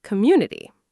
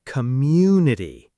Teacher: The stress falls on mu